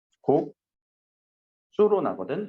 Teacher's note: 시옷이 쌍시옷으로 바뀌었지. 자, 그러니까 이거는 교체 현상이에요. · 국수는 곡수로 날 거고 시옷이 쌍시옷으로 바뀌네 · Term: 된소리